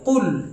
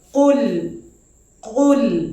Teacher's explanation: কফটা মোটা বর্ণ, ইস্তে আলার বর্ণ, আর লামটা ইস্তেফালের বর্ণ অর্থাৎ পাতলা বর্ণ। এই জন্য লামের সময় লামটা যখন উচ্চারিত হবে মুখের আকৃতিটা আমরা পাতলা রেখে দেবো।